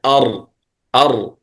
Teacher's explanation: أدخل أي أدخل إلى ظهر اللسان قليلا، يعني أن الراء أدخل إلى ظهر اللسان أي إلى المؤخر، إلى اللسان قليلا، ليس إلى الأسنان، مما يؤدي إلى تقعر اللسان، يعني يكون اللسان هكذا أر.